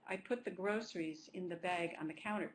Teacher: put has a stress but it's not the focus stress